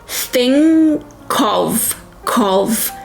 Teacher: When a word ends in a consonant, like think in this case, and the next word starts with a vowel or of, the consonant, when you link the two words, is attached to the next word, in this case of.